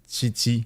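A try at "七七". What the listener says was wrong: Not like a T, like a very thin CH that said instead of through the like the back of the mouth, it's said through the front of the mouth. Qi Qi.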